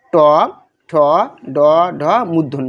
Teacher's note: আমাদের দাঁতের দন্তমূল এবং জিহ্বার সম্মুখ ভাগ দিয়ে উচ্চারিত হয় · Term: মূর্ধন্য